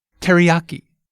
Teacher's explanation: See how we stress the yah syllable.